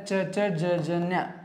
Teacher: ತಾಲವ್ಯ ಅಂದ್ರೆ ಇದು ದವಡೆ ಭಾಗದಲ್ಲಿ ಹುಟ್ಟತಕ್ಕಂತವು